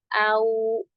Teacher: दोनों होंठों को गोल करते हैं, बंद नहीं करते। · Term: वा